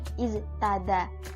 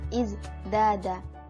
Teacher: Dalam kata iztada menjadi bunyi huruf dal yang bersifat majrur, yakni izdada, yang disebabkan karena dekatnya bunyi huruf za yang bersifat majhur. Za dan da keduanya sama-sama bersifat jahar dan jelas. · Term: asimilasi